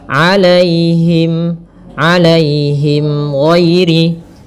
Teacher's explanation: Kemudian pada lafal alaihim di sini ada ya sukun yang didahului dengan fathah. Ini kita namakan dengan bacaan lin. Maka lembut dalam pelafalannya.